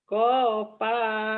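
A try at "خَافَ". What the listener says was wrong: Ko bukan kopa. Khair. Khofa ya, bukan kopa. Khofa.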